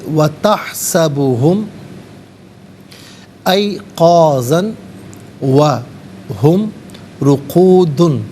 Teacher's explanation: ایقاظاً میں ضا پر 2 زبر کی تنوین ہے، اس سے واو کے ساتھ ملائیں گے، واو کی آواز کو ادا کیا جائے گا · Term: یرملون کا جو قاعدہ